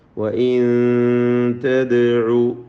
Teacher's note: സാക്കിനാനൂൻ ഇഖ്ഫാ ചെയ്ത് മറച്ചു മണിച്ചു ഓതേണ്ടതാണ്